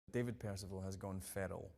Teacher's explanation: It possesses wildly different vowel sounds to most accents in England, and the R is tapped, meaning that the tip of the tongue hits the alveolar ridge, the roof of the mouth, as you are articulating it